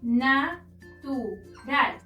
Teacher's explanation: Ral es la sílaba tónica, es decir, la última sílaba, pero como no termina en n, s o vocal, no la podemos acentuar.